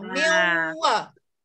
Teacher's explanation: Masukkan nun mati dalam ya. Gitu. Beserta dengung. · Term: idgham